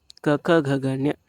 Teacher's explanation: ಈ ಅಕ್ಷರಗಳು ಏನಾಗ್ತವ ಕಂಠದಲ್ಲಿ ಹುಟ್ಟಕೊಳ್ತವೆ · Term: ಕ ವರ್ಗ